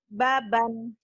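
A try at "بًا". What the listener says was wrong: Jangan ditahan ya. Jangan ditahan. Ini nggak ada mad. Belum ada madnya, belum ada bacaan panjangnya.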